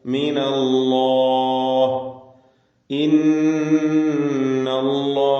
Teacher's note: ഇസ്മുൽ ജലാല അതിലുള്ള ലാമിന് തഫ് കൊടുക്കണം തടിപ്പിച്ച് സ്വരഭാരത്തോടെ ഉച്ചരിക്കുക